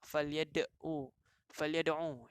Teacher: ada satu huruf yang kita lantunkan itulah dinamakan qalqalah sughra, kerana di dalam dia di tengah perkataan